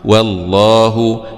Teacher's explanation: مع تفخيم اللام لأنها جاءت بعد حرف مفتوح